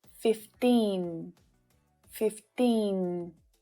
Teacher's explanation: With 15, the tip of your tongue should be touching the ridge behind your top teeth.